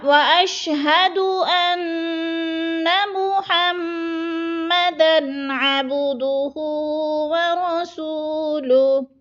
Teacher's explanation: محمدن پہ غنہ نہیں کرنا، ادھر غنہ نہیں ہے